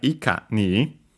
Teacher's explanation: The accent of ikani would be on the ka